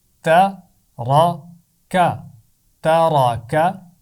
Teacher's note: خیال رکھیں کہ را کو موٹا پڑھنا ہے، تا اور کاف کی آواز کو نہیں